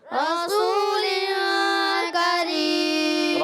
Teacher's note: واو مدہ ہے، ایک الف کھینچیں گے، سین کو سیڑھ کے ساتھ ادا کریں گے۔